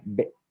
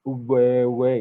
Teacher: B itu kan konsonan utuh plosif, W itu kan sudah semi vokal